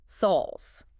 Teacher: Oh, they dropped the T entirely.